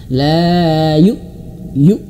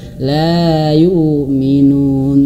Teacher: Hamzah yang sukun itu harus betul-betul terputus suaranya.